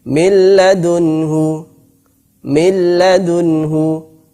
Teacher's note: ini dibaca dengan idgham, dimasukkan, nunnya dimasukkan kepada lam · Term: idgham bila gunnah